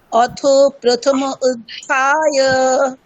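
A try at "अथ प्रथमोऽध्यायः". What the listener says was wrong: না, ওটা ওইরকম মানে আলাদা হবে না, মানে প্রথম অধ্যায়ঃ এরকম আলাদা না, একসাথে। অথ প্রথমোধ্যায়ঃ। হ্যাঁ, ওটা দীর্ঘ আছে একটু, ওটা একটু ওপারটা দীর্ঘ যেহেতু একটু। হ্যাঁ, তাহলে প্রথমোধ্যায়ঃ।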